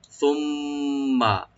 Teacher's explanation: মিম মুশাদ্দাদ এখানে ওয়াজিব গুন্না, কালে পরিমাণ গুন্না করবো, টান হবে না, শুধু গুন্না করবো